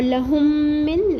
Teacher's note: اور لہم من لام کے اوپر سنگل حرکت اور ہا کا پیش ملا کے پڑھیں گے میم تشدید کے ساتھ. یہاں پر ادغام کریں گے، ادغام شفوی ایک الف برابر